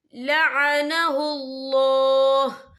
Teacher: ٹھہرنے کی صورت میں ہا جو ہے ساکن ہو جائے گا.